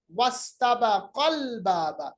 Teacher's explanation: बीच में जो हमारे पास हमजा है जिसको हम हमज़तुल वसल कहते हैं वो गिर गया।